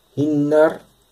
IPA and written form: h|(i)nːɑɾ ((h)innar)